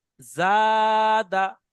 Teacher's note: তাহলে জাটা টান হবে আর দালটা টান হবে না। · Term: আলিফে মাদ্দা